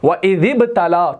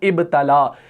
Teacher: ہم نے اس ذال کو جو ہے اس با سے ملایا ہے